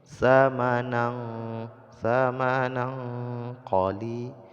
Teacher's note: tanwin bertemu dengan qaf ini hukumnya ikhfa, jadi disembunyikan tanwin ke dalam qaf sehingga bunyi tanwinnya menjadi samar-samar